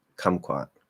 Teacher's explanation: you can hear that first K is strong because it's at the start of a stressed syllable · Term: strong K